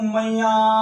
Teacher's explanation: जो दीर्घ स्वर है उस स्वर को और लंबा खींच कर अधिक जो समय लगाया जा रहा है जिस स्वर में, वही प्लुत स्वर है। इसका मतलब है कि यह स्वर आगे तक यह स्वर आगे तक चलता हुआ जा रहा है ध्वनि के रूप में, और कितना जा रहा है, कितने समय तक जाओगा, ये हमें अंदाजा नहीं है, तो ये प्लुत स्वर है।